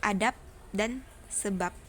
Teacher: Tetapi dalam kondisi tertentu, fungsi pembeda antara B dan P bisa batal, setidak-tidaknya bermasalah, karena dijumpai bunyi yang sama. Misalnya fonem B pada silaba akhir kata adab dan sebab diucapkan P · konsonan hambat letup bersuara B tidak mungkin terjadi pada posisi koda. Ketika dinetralisasikan menjadi hambat tidak bersuara, yaitu P sama dengan realisasi yang biasa terdapat dalam fonem P.